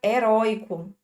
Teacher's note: a palavra heroico traz o ditongo aberto